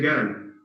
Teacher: in some tribal dialects, they don't have the qaf. They say ga. They replace it by ga. So instead of saying qala, they say gal.